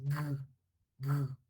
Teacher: la oclusiva velar sonora